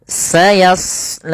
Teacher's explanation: Di sini pada lafal shad tebal, karena huruf shad salah satu sifatnya adalah isti'la, yaitu pangkal lidah terangkat